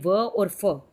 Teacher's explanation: इनका उच्चारण तब होता है जब होंठ पर दांतों का हल्का सा स्पर्श किया जाता है। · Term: दंतोष्ठ्य